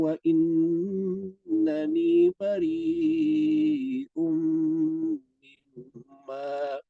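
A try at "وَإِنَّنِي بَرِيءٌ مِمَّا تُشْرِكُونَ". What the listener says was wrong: Wa innani ni dibaca panjang.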